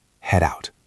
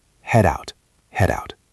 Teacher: Notice the D in head sounds a bit like a soft duh or a flap because it connects to the vowel out.